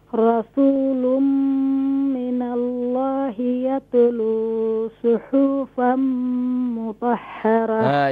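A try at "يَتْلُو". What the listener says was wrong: Yatlu, don't do here qalqala on the ta.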